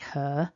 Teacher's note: i don't tend to pronounce that r strongly at the end of a word like her for me her ends in the uh vowel